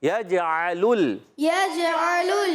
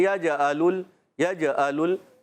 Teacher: عین ادا ہوتا ہے حلق کے درمیان والے حصے سے, عین زور دینا ہوتا ہے.